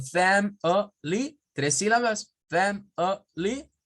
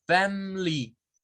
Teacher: hay personas que los pronuncian como family, 3 sílabas, family, y hay personas que la pronuncian sin el schwa, como family, sin el schwa. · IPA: /ə/